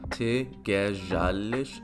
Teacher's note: So the Z is going to become a J.